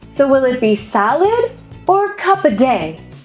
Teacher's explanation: When the speaker offers a choice between two or more items, the pattern is first a rising pitch and then a falling one. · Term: Choices